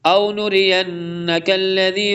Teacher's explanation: ادغام کریں گے اور غنہ بھی ہوتا ہے نون مشدد پر، ادغام اور غنہ دونوں ایک ٹائم میں ہوتے ہیں